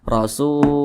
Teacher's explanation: Mad Thobi'i panjangnya dua harakat atau kira-kira dua ketukan